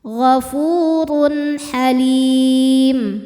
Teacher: Ghafurun. Kemudian ada izhar halqi karena ada tanwin dhammah menghadapi huruf halqi atau huruf tenggorokan yaitu ha. Maka tanwin dibaca jelas.